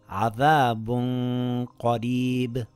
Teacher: I slightly hid the noon and kept the nasal sound on the makhraj of the next letter. I lengthened it for two counts with a heavy nasal sound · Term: ikhfa